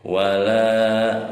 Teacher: Hukum tajwidnya mad tabi'i, panjangnya 2 harokat.